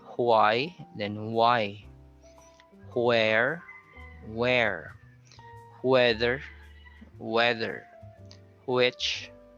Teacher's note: With the WH sound, H, blow air first before you glide your lips.